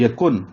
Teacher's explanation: کاف کو نون سے ملانا تھا لیکن نون نہیں پڑھا جا رہا. اس کی ریزن یہ ہے کہ آگے لام آ رہا ہے، تو تنوین یا نون ساکن کے بعد لام آ رہا ہے آ جائے تو حروف یرملون میں سے یہ لام ہے تو ادغام ہوتا ہے.